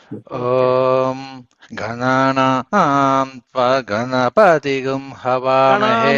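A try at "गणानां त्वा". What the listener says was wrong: గణానాం త్వా దీర్ఘం చెప్పట్లేదు సార్.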